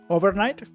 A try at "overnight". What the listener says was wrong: So there's a slight pause when you said it, but it was very, very close.